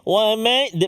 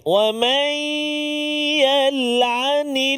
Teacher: Masukkan bunyi nun ke dalam ya. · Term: idgham ma'al gunnah